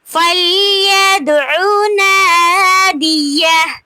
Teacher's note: فَلْيَدْعُ پہ دال پہ قلقلہ ہو رہا ہے